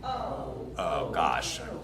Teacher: It goes between O and going to oo. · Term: diphthong